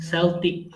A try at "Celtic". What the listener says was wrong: It is Celtic. C sounds like car. There is a rule. When C should be sound like car and when C should be sound like sa. This is Celtic.